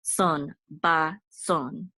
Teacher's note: And then we have a bet here, and this says ba, and this is a sadi, and this is the accent. So the accent is going to be on the last syllable. Sadi with, and this aleph has a cholem, so, and the nun sofit closes it out, so it says son, ba, son.